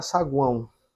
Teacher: semivogal mais vogal mais semivogal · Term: tritongo